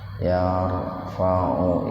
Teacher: Jadi ujung lidahnya digigit, wa'id, yar, tafhim. Ro mati didahului oleh fathah, jadi ro-nya dibaca tebal